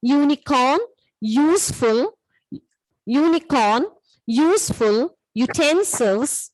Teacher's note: the word may begin with a vowel letter U, but it may have a consonant sound of YU.